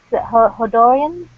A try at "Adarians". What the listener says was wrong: it's like the H is silent. It's like Adarians. Adarians. Yeah, Adarians.